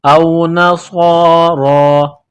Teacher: سیٹی کی آواز پیدا کرنا ہے، صاد کو موٹا کرنا ہے، را کے اوپر کڑا زبر ہے، ایک الف کے لمٹ میں کھینچنا ہے، را کو موٹا کرنا ہے